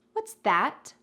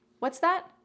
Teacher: if you want to use this phrase to say, I didn't hear what you said, please repeat, you need to emphasize both words. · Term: equal emphasis